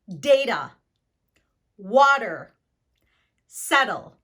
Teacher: your tongue touches the alveolar ridge, which is the ridge at the top of your mouth, that kind of strange feeling part of your mouth. · When your tongue hits that part of your mouth, it can make a quick D sound. And we use this quick D sound in between 2 vowels. So we have a vowel, the T, and the vowel. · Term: alveolar tap